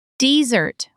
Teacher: with the stress on the first syllable, is a dry place, like the Sahara.